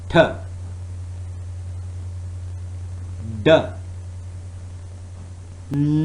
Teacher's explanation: the tip of the tongue is touching the alveolar ridge, and that is the point where it is cutting off the airflow